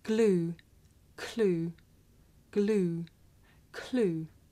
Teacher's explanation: it may be difficult to tell the difference between this voiced sound that you hear at the beginning of the word glue and it's voiceless partner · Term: voiced consonant